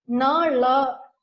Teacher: The retroflex sound in HKE variety, na, la, is realized in the initial position.